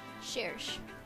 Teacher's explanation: Her name seems to be derived from French, and the CH sound is pronounced like an SH in this case.